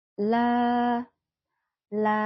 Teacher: dua harakat saja jangan terlalu panjang karena ini merupakan Mad thbiii